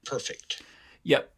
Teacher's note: So this is just a syllabic R. So you can transcribe it like that, just the with a syllabic marker underneath it.